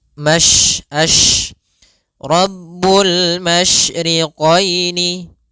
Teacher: terkandung di dalam huruf syin yaitu menyebarnya suara. Sehingga jangan dibaca rabbul masriqoini. · jangan dibaca rabbul masriqoini. Jangan dengan huruf sin tapi dia huruf syin. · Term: tafasyi